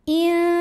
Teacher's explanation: Lam jalalah dibunyikan secara tarqiq, sebab huruf sebelumnya berbaris kasrah, maka bacanya tipis.